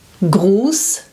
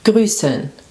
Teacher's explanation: So Gruß has a long U, and grüßen has a short vowel